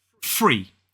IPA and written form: friː (free)